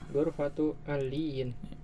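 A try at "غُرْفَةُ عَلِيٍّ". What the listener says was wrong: Ghurfatu aliyin. Lamnya nggak pakai tasdid ya. Ghurfatu aliyin ya, kamarnya Ali.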